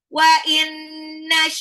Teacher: nun sukun ketemu nun adalah idgham bil gunnah ditahan ya 2 sampai 3 harokat